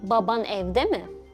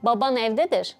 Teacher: to pose a question, Cypriots use intonation and don't use the interrogative particle mı, mi at all.